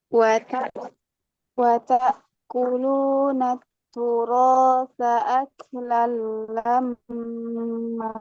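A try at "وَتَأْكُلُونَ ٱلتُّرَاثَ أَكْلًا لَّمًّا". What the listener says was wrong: Nah, mimnya berapa rokat? Dua kan? Iya, tadi kok agak panjang. Lama.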